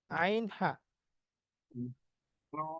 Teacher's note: গলার মাঝখান বা কন্ঠনালীর মাঝখান এখান থেকে দুটি হরফ উচ্চারিত হয় আইন এবং হা